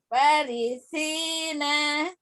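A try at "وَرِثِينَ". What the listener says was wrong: Wa. Panjang. Itu huruf sa ya, bukan sin. Warisina sa ya hurufnya.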